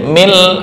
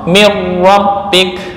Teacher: Asalnya min ladun menjadi mil, langsung sempurna. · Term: kamil